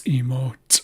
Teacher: This C with the apostrophe on top, or as I like to call it, the apostro, it's an ejective or explosive version of the regular C. And it sounds like T.